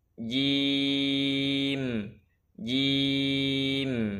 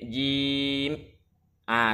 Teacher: kekeliruan dalam mensukunkan mim ketika wakaf yang benar Nah ini disebutkan mengucapkan huruf mim dengan menutup dua bibir tanpa ditekan keduanya jadi lembut saja penyentuhan bibirnya lembut saja